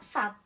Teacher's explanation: pita suara yang didekatkan cukup rapat sehingga udara dari paru-paru tertahan